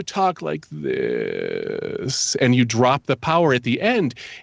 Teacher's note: It's a creaky or a croaky voice affectation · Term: vocal fry